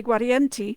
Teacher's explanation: So Guarienti, because that gua sounds like a wa, and the V is actually more of a wa sound